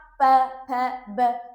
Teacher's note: ये होठों के साथ क्रिया कर रहा है। होठों पे ज्यादा कंपन महसूस हो रहा है। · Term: ओष्ठ